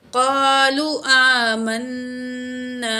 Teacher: मीम के ज़बर को नून तशदीद के साथ मिला के पढ़ेंगे · आमन, नून अलिफ ज़बर ना, अलिफ खाली से पहले ज़बर है, वन काउंट खींचेंगे, अलिफ मद है